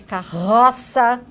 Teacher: o R de carroça, que é um R mais vibrante